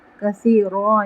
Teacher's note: یدل یہاں پہ تفخیم کریں گے ضاد پر، کثیروں یہاں پہ ہم غنہ کریں گے، ایک الف برابر، یہاں پہ ادغام ہو رہا ہے، کثیروں یہاں پہ ہم تنوین نہیں پڑھیں گے، یہاں پہ ہم الف پڑھیں گے